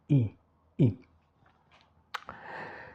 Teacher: Non retondate pas de projection de lèvres en avant et regardez I. Les lèvres sont bien étirées comme en français d'ailleurs.